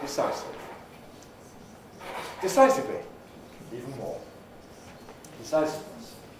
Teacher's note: The I is before a Fortis consonant, the second S sound, and the IV is an extra syllable.